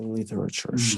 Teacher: the literature with her American flap T yes when this with this special T sound it's called flap